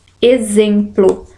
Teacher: A letra E, a palavra exemplo, porque aqui eu tenho o dígrafo em. Eu só ouço um som, como se o E fosse nasal. Eu não ouço o som, o fonema M, tá? Então a alternativa que tem 7 letras, mas que tem menos fonemas, na verdade ali eu tenho 6 fonemas, é a letra E, exemplo, por causa aí do dígrafo em.